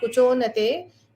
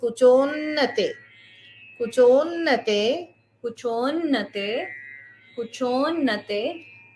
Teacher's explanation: So the O has to be extended a little bit, and you will hold the N. The O will be extended and it will land on in sound, so that it is double N there.